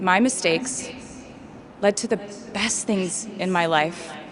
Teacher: Notice how she slows down when she says best and she changes her voice a little bit to emphasize the word.